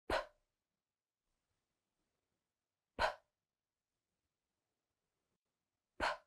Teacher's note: it's unvoiced, which means that you are not going to use your voice. No vibration in the throat. You're just going to push out the air with your lips. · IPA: /p/